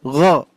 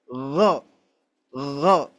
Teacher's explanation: huruf ghain itu tenggorokan bagian atas, pangkal lidah paling dalam gitu ya. Pangkal lidah paling dalam di daging lunak gitu ya.